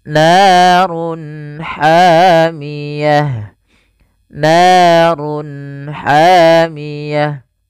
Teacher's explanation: Suaranya harus dibaca dengan jelas. Izhar jelas, halq karena dia bertemu dengan huruf-huruf halq setelahnya, yaitu huruf ha, maka harus dibaca dengan jelas. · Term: izhar halqi